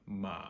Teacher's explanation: my voice starts very low lower than I would speak English normally and drops all the way down to the point where you can hear my voice crackling it fries out and then I pick it back up so Ma M there · third tone starts very low goes basically as low as your voice can go stays there for an instant and then picks up a little bit higher than you started